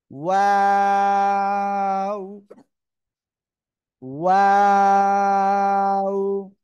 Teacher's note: আমরা তো জেনে গিয়েছি যে দুই ঠোঁট থেকে এই অক্ষরটা উচ্চারণ হবে, তাই না? দুই ঠোঁট গোল করবেন। শুরুতেও গোল হবে, মাঝখানে দুই দিকে চলে যাবে, আবার শেষে এসে গোল হবে।